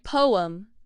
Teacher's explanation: It rhymes with them. The first syllable is po. Then there is a slight but audible break. The second syllable is a clear separate um sound like poem. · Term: British English